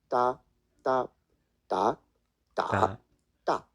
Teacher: in reality to the Chinese this is more of a nonaspirated t